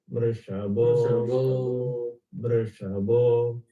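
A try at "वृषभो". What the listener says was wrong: Yeah, when it comes to Bho, you have to do the aksharam correct. Bha, bha. So it cannot be Bo, Mrishabho. Bho, ha, உள்ளேந்து வயத்துலேருந்து வரணும், from the Navi. Mrishabho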